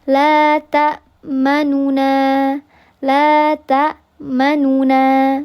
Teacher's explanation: Bisa dibaca dengan raum. Raum itu berarti dibaca 2/3 harakat.